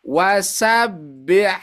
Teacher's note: Nah, ketika dia bertemu dengan H yang keluar dari tengah tenggorokan